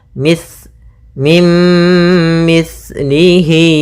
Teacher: hati-hati dalam pelafalan sa, jangan dibaca mis gitu ya, tapi di situ sa